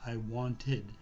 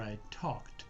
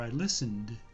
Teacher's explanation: It can be pronounced with an id sound, like I wanted id, or I talked, then you have a t sound, or I listened, and then you have a d sound. So you can have a d sound or a t sound or an id sound, but you never have an ed sound, although that's exactly the way it is spelled. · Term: ed ending